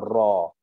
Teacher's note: Ra makhraj dia hujung lidah pergi ke langit-langit atas. So kita pun bawa hujung lidah kita pergi ke langit atas. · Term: getaran